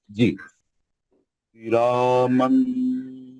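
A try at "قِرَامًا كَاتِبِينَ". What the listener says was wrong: नहीं, मन नहीं, नून का आवाज नहीं आना। क़िरामन, ऐसा नून के आवाज को छुपा के नाक से गुन्ना करो। क़िरामन मीम का गुन्ना नहीं, क़िरामन। मुंह बड़ा खोलो, जबान को नीचे पकड़ो, आवाज को नाक में लाओ, गुन्ना करो।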